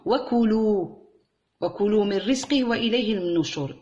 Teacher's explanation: ما هو عندناش مد في حرف الكاف